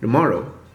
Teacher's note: the first syllable is reduced to a barely perceptible D plus schwa syllable